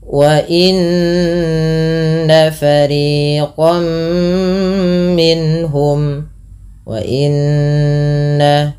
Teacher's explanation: tahan bunyi suara nun yang berharakat tasydid karena ia dikategorikan bacaan ghunah. Beberapa di antara kita kadang terlupa di dalam membaca ghunah tidak menahan bunyinya ya.